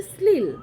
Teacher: শ্লীল বানানের তালব্য শটা দন্তস্বর মতো উচ্চারণ হচ্ছে, মানে দন্তধ্বনির মতো উচ্চারণ হচ্ছে। শ্লীল যেটা উচ্চারণ হওয়া হয়তো উচিত ছিল শ্লীল, সেটা না বলে আমরা আমাদের বাঙালিদের উচ্চারণ বৈশিষ্ট্যে সেটা হয়ে যাচ্ছে শ্লীল।